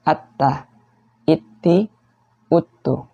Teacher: Kemudian dalam keadaan tasydid, sama ya. Jadi hamasnya hilang, aliran nafasnya, aliran udaranya hilang.